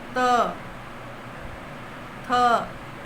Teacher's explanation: दंत है, जिसका ऊपर के दांतों पर जीभ लगने से होता है।